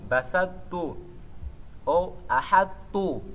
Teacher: Podemos fazer o idgham eliminando este ta, colocando o shadda no ta.